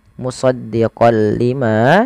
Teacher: memasukkan huruf tanwinnya kepada huruf lam